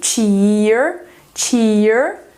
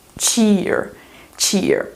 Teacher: Ou em americano fica esse I com R. Em britânico fica esse I com schwa.